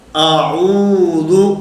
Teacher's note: حمزہ الگ، عین الگ، کیونکہ اس کا مخرج الگ ہے